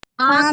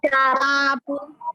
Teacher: ये ऐसा है जैसे नाक से भी आवाज आएगी और मुख से भी आएगी। इनका जब हम उच्चारण करेंगे चंद्र बिंदु का, नाक और मुख दोनों से आवाज आएगी। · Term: अनुनासिक